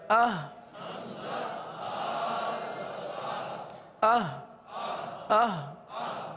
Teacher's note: حمزہ ہا زبر اہ اہ اہ. دیکھیں اس حرف کو حلق میں اتارنا ہے